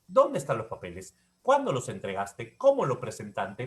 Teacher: Estos pronombres interrogativos siempre son descendentes.